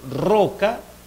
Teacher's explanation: aire busca pasar lateralmente ese obstáculo vibrantes y de alguna manera el aire es bloqueado intermitentemente